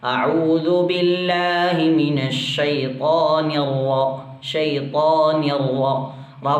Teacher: റ നമ്മൾ വായ നിറച്ചിട്ടാണ് പറയാറ്.